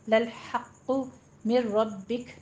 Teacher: ادغام بلا غنہ جب آپ کریں گے تو نون ساکن ہے، اس کی آواز بالکل سکپ کر دیں گے